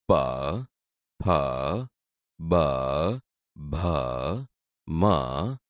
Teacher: તે બોલતી વખતે હોઠ એકબીજાને અડે છે તેથી આ ઓષ્ઠ્ય વ્યંજન છે